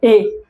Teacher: ये जो ए और ऐ है इसका उच्चारण होता है कंठ तालु। इसलिए इसको कहते हैं कंठ तालव्य।